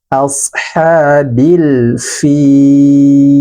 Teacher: Maka hukumnya adalah alif lam qamariyah atau izhar qamariyah. Lamnya harus dibaca jelas. Ashabil, bil dialirkan huruf lam. Ashabil fil, alirkan suara huruf lam.